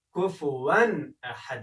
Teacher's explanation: وګورئ دلته واو دوه ځوانونه لري، تنوین راغلی دی، له تنوین څخه وروسته د ستوني توری راغلی دی، یعنې حلقي توری حمزه راغلی ده. دلته موږ باید اظهار وکړو، یعنې داسې ونه وایو چې کفوا احد، اخفا باید غونه ونه شي، کفوا احد باندې وویل شي او په احد کې هم په دال کې باید قلقله وشي.